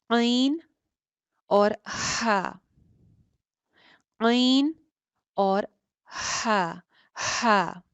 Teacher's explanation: ये अदा होती है बिल्कुल नीचे वाले हलक से। दरमियान हलक से अदा होते हैं ऐन और हा